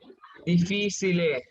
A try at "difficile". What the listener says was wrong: Correct. So difficile. Okay.